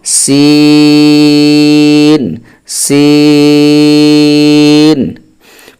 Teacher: আমাদের দুইটি শব্দ হয়েছে অর্থাৎ একের অধিক শব্দ হয়েছে এজন্য আমাদের এই সিন বলতে গেলে চার আলিফ টানতে হবে